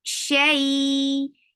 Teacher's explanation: Shay, it is lean, so make it 2 counts long.